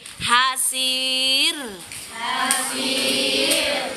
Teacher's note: Ro setelah baris kasroh hukumnya tarkik. Apa itu tarkik? Dibaca tipis.